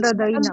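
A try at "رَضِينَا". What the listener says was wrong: रदीना नहीं कहना, जबर नहीं लगानी, रदीना।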